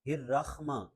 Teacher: ایک تو خا نہیں پڑھنا، حا پڑھنا ہے، اور دوسرا را اور حا کو ملانا نہیں ہے۔